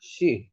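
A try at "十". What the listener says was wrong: শি তো মানে বেশিরভাগগুলো four tone হয়েছে শি সেকেন্ড টোন শি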